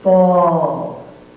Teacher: This is the sound aw. The lips are rounded, and the sound comes out aw. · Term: vowel modifying sound